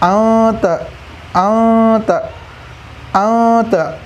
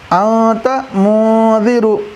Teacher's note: نون کی آواز کو ناک میں چھپا رہے ہیں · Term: اخفا